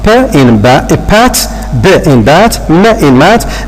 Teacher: They are formed by the narrowing of the vocal tract by the lips. For example, P in pat, B in bat, M in mat, they are bilabial because the 3 consonants are being made or produced or articulated by if you like, let's say closing our 2 lips, the lower lip and the upper lip. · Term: bilabial consonants